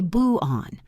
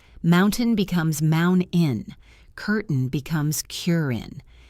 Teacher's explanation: We stop the air in our throat. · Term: glottal stop